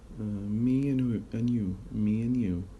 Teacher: If we switch the order, me and you, there is ye sound inserted.